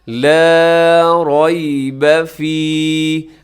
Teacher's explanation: آگے لا، اب لا کو لمبا کیا کیونکہ یہ الف مدہ ہے، الف سے پہلے لام کے اوپر زبر ہے تو آپ نے اس کو بھی ایک الف تک 1 سیکنڈ تک لمبا کرنا ہے